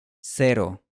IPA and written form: seɾo (cero)